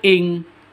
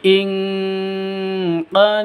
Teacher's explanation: cara bacanya samar didengungkan siap-siap ke huruf qofnya ditambah dengan ng ditambah dengan ng itu khusus Q dan Kaf makanya ee bacanya